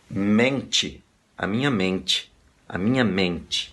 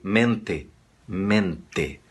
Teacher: Esse E soa uma I. Em espanhol não ocorre nunca